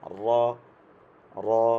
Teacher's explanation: বাংলায় হয় র, এটা হবে একটু মোটা করে র